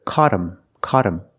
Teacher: now that T is between vowels, phonetically, so it changes to a fast D, and you hear caught him, caught him.